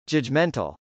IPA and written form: dʒədʒmˈɛntəl (judgmental)